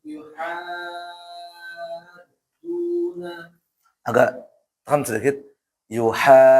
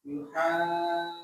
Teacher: supaya dalnya double